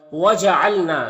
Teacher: نا میں الف مدہ ہے اور یہ نون مشدد ہے تو یہاں پر غنہ ہوگا، اس کی آواز کو ناک میں لے جا کر گنگنائیں گے ایک الف کی مقدار